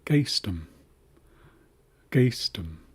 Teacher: this is a uvularized G. So, regular G is kind of a higher sound whereas a G bar is a deeper sound.